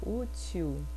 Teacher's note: porque a gente fala útil, né? O L faz som de U. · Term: ditongo vocálico